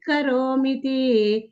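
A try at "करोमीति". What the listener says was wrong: ಮಿತಿ ಅಲ್ಲ ಮಾತಾಜಿ ಮಿತಿ ಅಂದ್ರೆ ಮತ್ತೆ ಬೇರೆ ಆಗುತ್ತೆ ಅರ್ಥ ಕರೋಮಿತಿ ಮಕೆ ದೀರ್ಘ ಇದೆಯಲ್ಲ ಅಲ್ಲಿ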